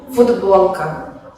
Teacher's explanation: Esto pasa en el caso de la palabra futbolka, que se escribe con la consonante sorda t, que se pronuncia en el habla como d, ya que está seguida por una consonante sonora